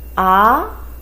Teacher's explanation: the voice starts from a low voice and increase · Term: second tongue